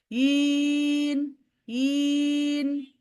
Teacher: যখন আপনার মাদ কমপ্লিট হয়ে গেল 4 কাউন্টস, এরপরে নুনে টাচ করবেন, সাউন্ড অফ করে দিবেন